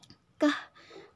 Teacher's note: bagian belakang lidah membentuk penyempitan penutupan sempurna atau penutupan total dengan velum